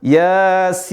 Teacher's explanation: Karena ada ya mati, kemudian berikutnya ada huruf bersukun. Ya mati plus bersukun setelahnya, maka dibaca 6 harokat atau lebih dari 2 harokat.